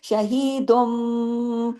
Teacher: لیے کہ تنوین کے فوراً بعد جب حرف با آ جائے، حرف با آنے کی وجہ سے اقلاب کا قاعدہ لگ جاتا ہے، تبدیلی ہو جاتی ہے، آواز نون کی نہیں رہتی، میم کی آواز آتی ہے